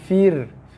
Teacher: Ra mati sebelum dia bagi bawah, ra dibaca dengan nipis. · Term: ra dibaca nipis